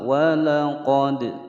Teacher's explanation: walaqad dal sukun dipantulkan karena hukum bacaan qalqalah. Karena dia berada di tengah-tengah kalimat adalah qalqalah sughra.